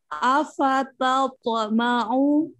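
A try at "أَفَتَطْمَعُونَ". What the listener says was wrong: Bacaannya tapi kayak kayak ta masih tebal sedikit. Jangan. Ta ta. Afata. Afata.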